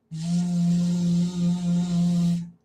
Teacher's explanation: The letter V is a voice sound. If we put our hands on our throat, we can feel our vocal cords vibrate as we make the V sound. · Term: voiced sound